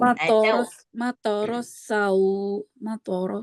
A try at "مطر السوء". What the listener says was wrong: Sa dulu baru sau gitu. Jangan matoros sau, jangan sau jadinya.